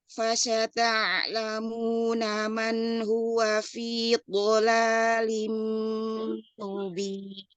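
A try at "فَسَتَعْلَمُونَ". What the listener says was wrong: Mau lebih ringan huruf sinnya ya. Fasata'lamuna. Iya, di situ juga ya huruf ainnya ya. Fasata'lamuna man.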